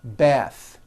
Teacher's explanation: The word bath is a noun with an unvoiced TH.